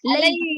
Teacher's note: لے نہیں بہن, لے پڑھ رہے ہیں آپ, لئی پڑھیے, لئی پوری ای کی آواز ظاہر ہونی چاہیے